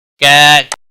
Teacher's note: کھڑی زبر ہے، ایک الف کے برابر کھینچ کر پڑھیں گے